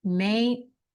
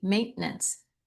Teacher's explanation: we're going to swallow that T. You're just going to swallow the T right in the middle. It's going to go away.